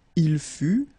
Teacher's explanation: Tu fus, exactly the same thing, final S not pronounced. Il fut, final T not pronounced